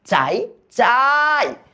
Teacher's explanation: আ টাকে কিন্তু আমি দীর্ঘ করে টানতে পারতেছি বাট ইটাকে কিন্তু আমি টানতে পারতেছি না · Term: অর্ধস্বর